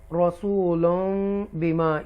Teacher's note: तनवीन के बाद बा आ रहा है इसलिए मीम लगा है और तनवीन की आवाज़ जो है, साउंड जो है वो मीम में मिक्स हो जाएगा।